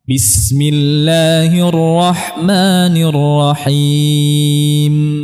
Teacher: huruf mim kita jelaskan mengalirnya gunnah. Dia mengalir tapi tidak sepanjang rakhawah.